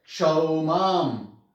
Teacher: अनुस्वार। ये म की ही आवाज देता है